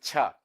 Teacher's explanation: That is voiceless post-alveolar affricate.